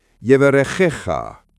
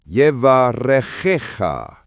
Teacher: The ch sound is guttural, like clearing your throat, not a hard K. Emphasis falls on the second to last syllable.